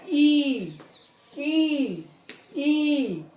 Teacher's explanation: तालु से हो रही है, और वो स्वतंत्र रूप से बाहर निकल रही है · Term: तालव्य